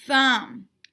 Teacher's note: thinking about this soft unvoiced sound air is passing silently thumb when you do the sound there is no vibration in your throat